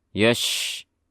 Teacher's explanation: karena dia bersifat rokhawah, suaranya tahan, dan juga bersifat tafashi, jadi suara shinnya harus jelas. Yash, jangan yash, enggak. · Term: shin sukun